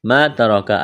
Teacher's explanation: الف مدہ ہے ایک الف کے برابر کھینچنا ہے